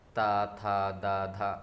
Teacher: इन वर्णों के बोलने में जो हमारी जीवा होती है हमारे दांतों को टच करती है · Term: ता वर्ग